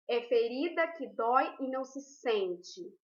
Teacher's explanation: a sílaba tônica é o sen de sente